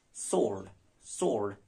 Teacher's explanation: S-W-O-R-D, sword. W is dropped.